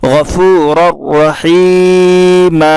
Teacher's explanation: रा का रा में इदगाम होगा, इसलिए कि तनवीन के बाद रा है, इसलिए इसको बिला गुन्ना के मिलाकर पढ़ेंगे। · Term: इदगाम बिला गुन्ना